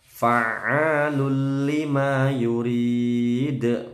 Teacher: Fa'alul lima yurid, ditekan ainnya, fa'a, panjang 2 ketukan. Lul lima, tanwin ketemu lam, bacaan idgham bila gunnah, nggak boleh dengung. Fa'alul lima yurid, qalqalah kubro dan mat arid disukun.